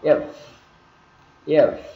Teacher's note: cái môi ở dưới nó chạm răng phía trên, được chưa, đấy là âm F, chúng ta phải có cái hơi ra